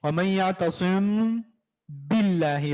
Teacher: बा जब हम पढ़ेंगे तो होंठ मिला लेंगे और बा अदा करेंगे, वमन यातसिम बिल्लाहि, बा में फिर मुकम्मल मिला लेंगे होंठ, तो ये है इख्फा, ठीक है, मीम साकिन का इख्फा है।